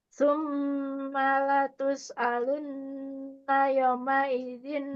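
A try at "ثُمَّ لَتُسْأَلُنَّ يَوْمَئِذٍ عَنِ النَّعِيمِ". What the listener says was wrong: Yau, yau, jangan buru-buru di sini. Yau, ya huruf linnya jangan buru-buru. Yauma idzin anin naim.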